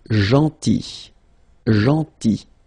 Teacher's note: So remember, this final L is not pronounced.